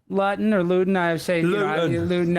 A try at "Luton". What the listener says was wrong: it's Luton. We don't pronounce our T's.